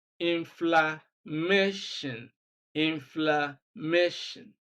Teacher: we have stress on MA, which is second syllable from the end of the word